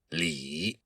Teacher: you have to say that I sound with a very low tone. It's the third tone in Mandarin Chinese.